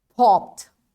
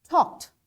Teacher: p is voiceless sound. That's why for voiceless sounds, we pronounce this ed as t